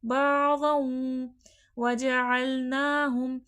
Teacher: دیکھیں یہاں پر واو آ گیا ہے تنوین کے بعد، تو 2 لفظ ملیں گے غنہ کے ساتھ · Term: ادغام مع الغنہ